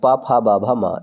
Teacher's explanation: पा वर्ग को ओठों के सहायता से बोला जाता है